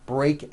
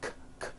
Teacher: Break ends with an unvoiced K sound. K, k. There's no voicing on that K.